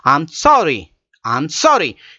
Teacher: Here sorry is with a high raised tone. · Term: rising tone